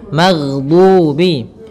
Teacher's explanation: Kesalahan yang sering terjadi adalah memantulkan huruf ghain, yang mana pada dasarnya huruf ghain tidak boleh mantul, tetapi dia memiliki sifat yaitu mengalir suaranya